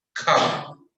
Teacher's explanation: When R comes in the final position of the word, it is totally silent. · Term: Rule of R